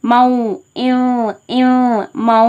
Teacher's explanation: இங்கே இதுதான் மால் குன்னாவின் எழுத்தான வாவ் இடம்பெற்றிருக்கு. அதற்காக நூன் சவுண்டை முற்றிலுமா நீக்கிட்டு வாவ் சவுண்டை மாற்றி ஒரு அலிஃப்க்கு நிகராக குன்னாவும் பண்ணி ஓதுறோம்